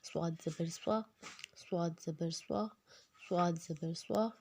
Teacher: صاد میں بھی سیٹی تھوڑی سی آئے گی